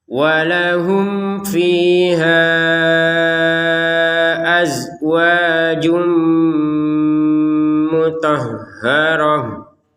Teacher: mim sukun bertemu fa, maka kita baca dengan jelas. Walahum fiha, masih ingat pembahasan tentang yang jelas, artinya tidak boleh dengung. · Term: dibaca dengan jelas